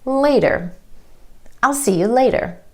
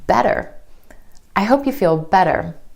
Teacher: The flap T is really just a D sound, and this flap T happens when T is in the middle of words in between 2 vowel sounds.